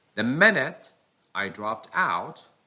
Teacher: the word out takes the primary stress and the word drop takes the secondary stress